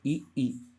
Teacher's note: आपकी जीभ ये जो तालु है यहाँ पे स्पर्श करके ही आप ई का उच्चारण कर पाएंगे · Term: तालव्य